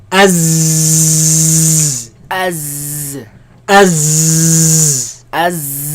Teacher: There's a lot of commotion, a lot of air, a lot of movement of air between the tongue and the teeth.